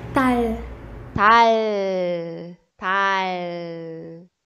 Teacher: Para pronunciar, coloque a ponta da língua no céu da boca. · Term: som de L